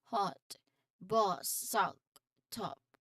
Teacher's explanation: It's a short sound where your mouth is open and your lips are slightly rounded. Think of it like the o in hot. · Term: open o sound